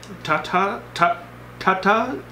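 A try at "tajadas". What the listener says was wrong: Are you dyslexic? That's a J. J's don't make T noises.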